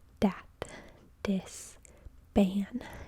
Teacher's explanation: So word initial fricatives and africates are pronounced as stops. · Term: stopping